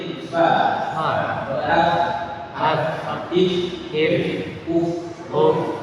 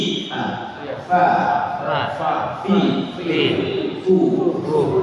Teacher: Nah, jadi bibir bawah ini kenakan gigi, jadi fa, if, uf. Jadi gigi ujung gigi atas kenakan ke bibir bawah, bukan bibir atas bibir bawah ya. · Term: huruf fa